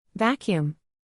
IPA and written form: ˈvæk.juːm (Vacuum)